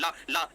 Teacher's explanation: कैसे कि ला पार्श्विक व्यंजन है, ला का उच्चारण करते समय हमारी सांस जीभ के बगल पार्श्व से गुजरती है, इसलिए इसका नाम पार्श्विक हो गया